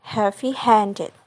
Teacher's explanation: the primary stress is on the second word and the secondary stress is on the first word